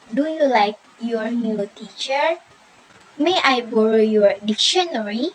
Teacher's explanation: The last, rising intonation. Rising intonation, the pitch of the voice rises on the end of the sentence.